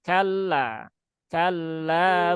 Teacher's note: lam bertasdid jangan ditahan terlalu lama nah ini kan kejadian kan Jangan Kalla ya cukup sekali aja